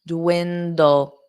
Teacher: So you do pronounce both D's.